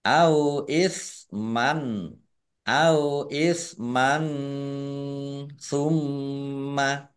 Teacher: fathah tanwin bertemu dengan huruf sa bacaan ikhfa dibaca samar-samar · Fathah tanwin bertemu dengan huruf alif bacaan idhar dibaca jelas